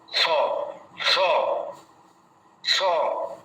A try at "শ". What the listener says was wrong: এটা দন্ত স্বয়ের উচ্চারণ হয়ে যাচ্ছে।